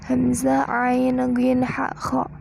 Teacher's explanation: Al-halaq tempatnya ada di tenggorokan. Hurufnya hamzah, ain, ghin, ha, kha.